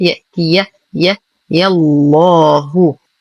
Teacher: ننتقل من فتحة الياء إلى تجديد اللام المغلظة في اسم الجلالة